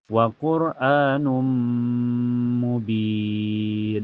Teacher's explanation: Karena tanwin domah ketemu mim. Cara bacanya tanwin domahnya dimasukkan ke mim dan ditahan sampai terasa ke hidung. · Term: idgham bigunah